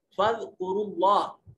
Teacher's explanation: اس میں جلالت سے ما قبل حرف کے اوپر ضمہ ہے اس لیے اس کو موٹا اور پر کر کے پڑھا جائے گا